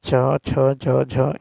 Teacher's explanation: ठीक है जैसे च छ ज झ य बात करें तो च है अल्प प्राण अघोष छ जो है महाप्राण अघोष ज जो है अल्प प्राण घोष है और झ जो है महाप्राण घोष है